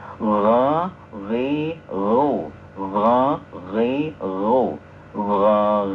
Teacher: rikhwah itu lunak ya lunak disertai dengan aliran